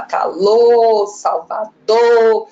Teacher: ele não fala o R final das palavras